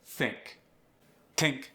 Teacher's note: No vibration. Voiceless. It becomes a T.